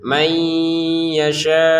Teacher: Di sini nun sukun bertemu ya. Masukin ke yanya dengan dengungan.